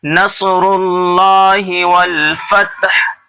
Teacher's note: साद को मोटा करके पढ़ना है. रुल्लाहि अल्लाह के नाम से पहले पेश है इसलिए अल्लाह का नाम मोटा है.